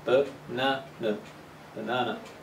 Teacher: The strong syllable is the second one.